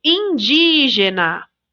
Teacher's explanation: a sílaba tônica é o di, porque tem acento, a gente já sabe.